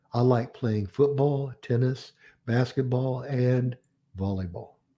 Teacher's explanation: a series no matter how many you have in the series you have Rising intonation on all the items except the last